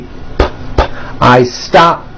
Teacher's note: I stop ends with an unvoiced P.